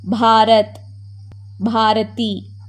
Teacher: ப with vibration, கொஞ்சம் அழுத்தி சொல்லணும்